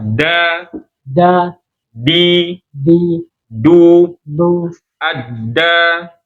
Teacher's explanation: Ujung lidah ketemu dengan pangkal gigi seri. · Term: huruf dal